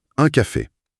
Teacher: L'air s'arrête brusquement dans le nez. Un café. La consonne N n'est presque pas frappée par la langue. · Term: nasal